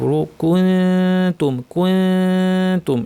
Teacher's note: জিব্বাকে তা এর মাখরাজে নিয়ে যাব উপর দাঁতের গোড়ার কাছাকাছি নিয়ে নাক থেকে গুন্না করব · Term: ইফা, ইখফা